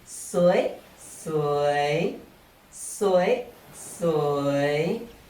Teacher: However, if you want to intensify your feeling further, you can change the tone of the first repeated word to high tone while maintaining the same tone for the second. For example, for สวยสวย you can change the tone of the first word from rising tone สวย to high tone สวย So instead of saying the usual สวยสวย you can also say สวยสวยสวยสวย to emphasize that it is so beautiful.